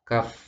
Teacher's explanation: Pangkal itu berarti belakang. Lidah bagian belakang kemudian ketemu dengan langit-langit sehingga dibaca kaf. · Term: huruf kaf